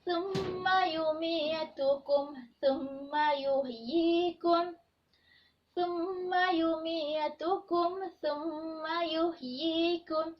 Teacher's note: Iaitu yang pertama, dibaca secara dengung. Dan yang kedua, ianya perlu dibaca dengan kadar 2 harakat. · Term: mim syaddah